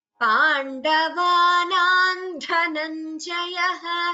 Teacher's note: you can combine the sandhi and chant it as Pandavanan Dhananjayah instead of Pandavanam Dhananjayah